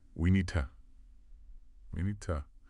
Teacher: First part, we need to remember how need and to often blend. That D in need gets reduced or dropped and to becomes to. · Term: reduction